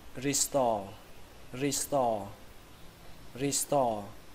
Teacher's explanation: từ này trọng âm của nó rơi vào âm thứ hai, âm store, store. Ở đây âm o chúng ta kéo dài nó ra, store, store.